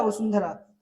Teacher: वसुंधरा अनुस्वाराचा उच्चार न सारखा येतो त्यामुळे इथे अनुस्वाराचा उच्चार हा न या परसवर्णा सारखा होतो म्हणजेच